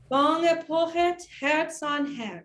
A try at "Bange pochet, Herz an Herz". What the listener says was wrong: I heard a tiny little vestige of the rhythm Corngill's given. I want just text rhythm.